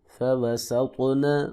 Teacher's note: طا کو موٹا بھی پڑھیں گے، قلقلہ بھی کریں گے